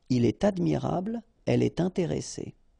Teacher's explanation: All right, so in all these cases, you should make the liaison, and in that case, it's with T. Il est admirable, elle est intéressée.